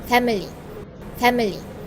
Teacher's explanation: The speakers maintain all three syllables. The schwa sound in the second syllables was clearly articulated which shows careful and clearer pronunciation.